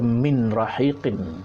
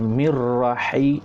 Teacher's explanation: Kita kena masukkan ya, bila nun mati bertemu ra, idgham bila gunnah, tak ada dengung. Jadi masuk pada ra